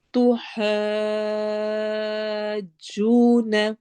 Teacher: الف مدہ کے بعد جیم کے اوپر شد ہے تو ہم نے اس کو زیادہ سارا لمبا کرنا ہے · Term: مد لازم